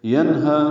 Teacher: نون ساکن کے بعد ہا آنے کی وجہ سے اظہار حلقی ہے، نون کی آواز ظاہر کر کے ادا کریں گے ، ہا کو دو حرکات لمبا کریں گے، ینہا، ہا اقصی